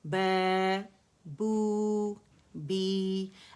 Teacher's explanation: مد اصلی ہے 2 کاؤنٹ اسے کھینچا جاتا ہے